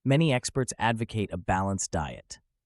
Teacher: Notice how the stress falls on the first syllable 'æd'. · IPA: /ˈæd.və.kət/